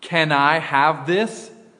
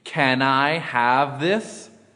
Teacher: In this example, the N is transferred or blended onto the next word, I. It is pronounced can I, can I. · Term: blending